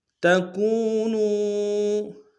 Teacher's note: کاف کو واو کے سامنے آنا ہے، واو مدہ ایک مقدار میں کھینچیں گے